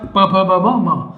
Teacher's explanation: ऐसे व्यंजन जिनका यदि हम उच्चारण कर रहे हैं तो दोनों ओठ आपस में क्या हो जाए, मिल जाते हैं, तो उनको अपन क्या बोलते हैं, ओष्ठ्य व्यंजन कहते हैं।